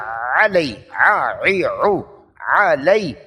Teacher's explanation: عین وسط حلق، حلق کا درمیانی حصہ، یہاں سانس کو روکیں گے